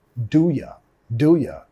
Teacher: Ahí estamos reduciendo el you a un ya.